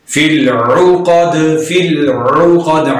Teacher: عین کو درمیان والے حلق سے پڑھیں گے اور دال پر قلقلہ کریں گے، ساکن حالت میں ہم نے پڑھا۔